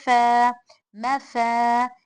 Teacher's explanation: मीम ज़ेबर मा, मीम होठों से, फा भी होठ, ऊपर के दो दांत नीचे की होठ को टच होना